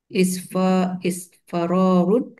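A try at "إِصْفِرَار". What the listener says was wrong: Bukan. Sedikit lagi. Bukan isfa, tapi is fi.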